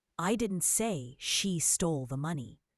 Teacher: Emphasizing stole suggests she did something else with it.